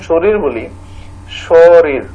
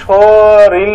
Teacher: দুটোই ছিল ব শূন্য র বা র এখানে একটা সমবর্ণ মানে এই র টা কিসে রূপান্তরিত হইছে ল তে রূপান্তরিত হইছে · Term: বিষম ভবন